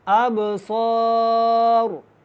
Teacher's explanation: اب جب با ساکن ہوتی ہے اس کے اوپر جزم ہوتی ہے تو یہ کلکلا کے ساتھ ادا ہوتی ہے، اب آواز کو دوبارہ پیدا کرتے ہیں، ابصار۔ یہاں پہ را ساکن ہوگی وقف کی صورت میں، اس کو موٹا پڑھیں گے